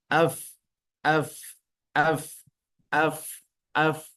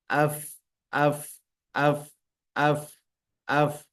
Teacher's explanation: ditempelkan gigi seri bagian atasnya maka mengucapkannya fa fa fa fa kalau dia berbaris sukun maka akan terlihat jelas AF AF AF AF AF ada udara yang mengalir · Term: sifat Hames